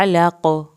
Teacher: काफ का कलकला, आइन को हल्क से पढ़ना है